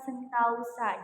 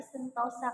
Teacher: selanjutnya ada diongisasi diongisasi adalah proses perubahan vokal tunggal menjadi vokal rangkap secara berurutan